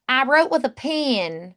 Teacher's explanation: So we kind of eliminate that dip thong. Um the e can be flattened a bit. So like pen sounds a little more like pin.